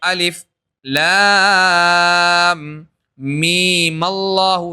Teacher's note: میم پہلے ساکن تھا لیکن آپ نے زبر دیا ملانے کے لیے